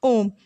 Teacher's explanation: इसका उच्चारण में ह्रस्व स्वर से तीन गुना समय लगता है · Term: प्लुत स्वर